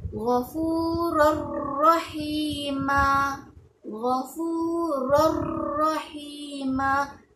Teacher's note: ada tanwin kan, bertemu dengan huruf ra yang kedua, ditarik ra yang kedua tu masuk dalam tanwin, yang mana bacaan dia Ghafurur rahima. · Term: idgham bila gunnah